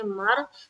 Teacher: रा को पुर रखना है, क्यों? क्योंकि राय साकिना से पहले जबर है।